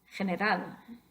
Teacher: el estrés natural de la voz cae en la última sílaba, la sílaba final